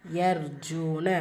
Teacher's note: ரா சுக்குன் பெற்று அதற்கு முன்னாடி ஃபத்ஹா வந்திருக்கு வல்லினப்படுத்தி ஓதணும்